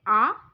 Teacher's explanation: आ वर्ण ओष नहीं है और यह कंठ ध्वनि है